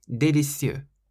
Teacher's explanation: You say délicieux, so you stress the cieux on the end.